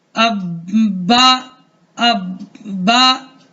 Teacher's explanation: बा 2 दफा पढ़ा जा रहा है, एक दफा अपने से पहले हर्फ के साथ मिलकर, और दूसरी मरतबा जो उस पर हरकत है जबर की, उसके मुताबिक पढ़ा जा रहा है